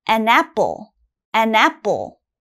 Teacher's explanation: when you have ann in front it has to sound almost like one word